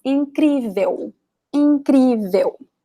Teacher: You cannot hear the L sound.